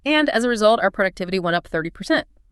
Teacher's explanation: a downward tone that signals certainty, confidence, especially when you're stating results or conclusions